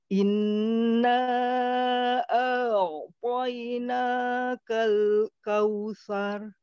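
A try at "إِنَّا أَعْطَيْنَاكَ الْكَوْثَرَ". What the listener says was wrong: Oke, kita langsung koreksi pada kata a'tainanya, coba a-nya lebih rileks sehingga tidak terlalu tebal bunyinya. Inna a'tainakal kautsar.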